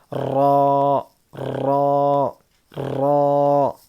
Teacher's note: اور ہم لوگ یہ را کو بھی پر پڑھیں گے، موٹا پڑھیں گے، بولڈ پڑھیں گے. را را، اور اس کے اندر تکرار ہوتی ہے ہلکی سی